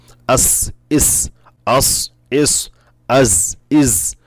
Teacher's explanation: এই যে একটা আওয়াজ, চিকন একটা আওয়াজ হবে, এটা হলো সফির · এই হরফগুলি আদায় করার সময় চড়ুই পাখি বা বাঁশির আওয়াজের ন্যায় বেজে উঠবে, যেমন ঠিক এরকম একটা আওয়াজ, এই যেরকমটা চিকন আওয়াজ।